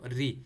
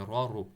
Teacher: را کو آپ نے موٹا پڑھنا ہے، لیکن کنڈیشن اس میں، را کے نیچے اگر زیر ہے تو را چھوٹا پڑے گا ہمیشہ. را کے نیچے زیر ہو، ری، صحیح ہے، ری چھوٹا، پتلا پڑھنا ہے. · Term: ترقیق